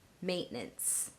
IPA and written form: ˈmeɪʔˌnəns (Maintenance)